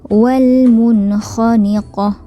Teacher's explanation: huruf kha adalah huruf izhar halqi, jadi tidak boleh didengungkan